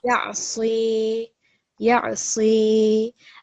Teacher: we have ya madda here. So we're going to make it 2 seconds